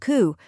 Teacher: Then comes ku, a quick, unstressed vowel sound like the A in sofa